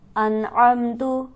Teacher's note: انعمتو، حمزہ اور عین کی آواز میں فرق رکھیں گے، اور نون ہمارے پاس ساکن ہے، یہاں پر ہم غنہ نہیں کریں گے کیونکہ اس کے بعد حرف حلقی میں سے عین موجود ہے